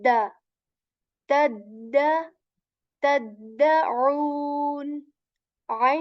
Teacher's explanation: say Okay so the letter this is a light d letter tip of the tongue touches the back of our upper teeth and we say d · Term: light dal letter